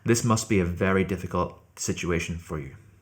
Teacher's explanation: try and keep your intonation not flat and don't rise it try to lower ever so slightly